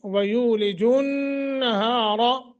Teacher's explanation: रा को मोटा क्योंकि रा के ऊपर ज़बर है